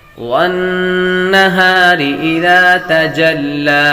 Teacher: والنہار نون مشدد پر ہمیشہ غنہ ہوتا ہے، یہاں پر غنہ کریں gے.